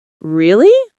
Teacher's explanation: when someone says really with a rising tone, it means surprise.